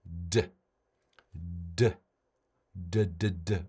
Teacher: 어때요 성대가 울렸죠 성대가 울리는 소리를 유성음이다